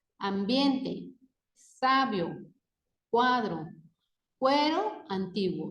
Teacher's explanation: las vocales forman parte de una misma sílaba se pronuncian en un solo golpe de voz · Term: diptongo creciente